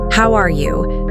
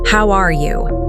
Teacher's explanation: compare the flat robotic how are you to the more natural Rising tone of how are you